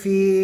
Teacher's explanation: ইয়া সাকিনের আগে জের, ইয়া মাদ্দাকে এক আলিফ টান দিয়ে পড়বো